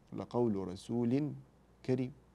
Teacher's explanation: تنوين بعده ماذا حرف الكاف والكاف من حروف ايه الاخفاء الحقيقي